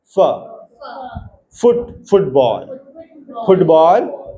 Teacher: लेवियो dental lower lip and upper teeth हल्का सा touch होता है। है ना? लोअर लिप जो है जब हम अपर टीथ को टच करके बोलेंगे तो इंग्लिश का साउंड निकलेगा फुट फुट और वैसा ही वन वाइन वी की स्पेलिंग वाला वैन W H E N वाले में नहीं है।